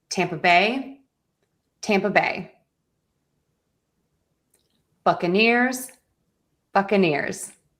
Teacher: Tampa Bay, Buccaneers, where primary stress is on tam and buck.